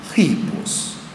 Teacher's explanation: no grego o espírito rude representava esse som H que marca aspiração